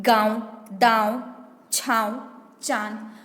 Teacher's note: में क्या होता है जब हम अनुनासिका उच्चारण करते हैं तो ध्वनि हमारे मुंह और नाक दोनों से निकलती है